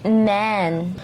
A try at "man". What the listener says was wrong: Sa Pinoy kasi A talaga. Kaya tayo, man. The man standing, ganon ang Pilipino, the man. Pero that's not how you say it in English. It's man.